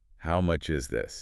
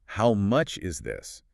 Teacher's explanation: If you go up at the end, how much is this? You sound kind of surprised or maybe even skeptical.